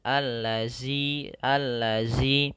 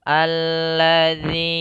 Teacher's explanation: Harusnya ini zalnya tipis, yaitu dengan ujung lidah menempelkan gigi sari kita.